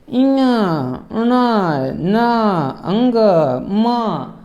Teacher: ये वर्ण जो है मुख से भी उच्चरित हो रहे हैं और नाक से भी उच्चरित हो रहे हैं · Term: अनुनासिक